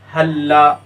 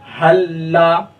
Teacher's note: پہلے والے لام کو نہیں پڑھیں گے، دوسرے والے لام کو پڑھیں گے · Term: ادغام متماثلین